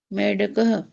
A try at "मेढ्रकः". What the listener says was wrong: मेढ्रकः, मेढ्रकः नहीं, बलाघात में डा नहीं आ पा रहा है। ढा कौन सा अक्षर है? पहला, दूसरा, तीसरा, चौथा?